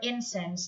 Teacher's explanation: incense is an uncountable now with the stress on the first syllable